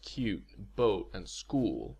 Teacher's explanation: cute boat and school are all pronounced with protruded rounding say them aloud and notice for yourself how the lips start